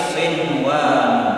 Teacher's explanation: nun sukun bertemu dengan huruf idgham bi gunnah yang tidak dibaca gunnah melainkan dibaca idhar. Namanya adalah idhar mutlak.